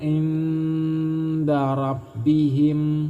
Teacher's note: Nun mati bertemu dengan huruf dal, ini disebut ikhfa. Cara membaca ikhfa yaitu dengan cara samar dan berdengung.